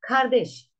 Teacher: Kardeş, ilk hecede A kalın ünlü var, ikinci hecede E ince ünlü var, büyük ünlü uyumuna uymaz.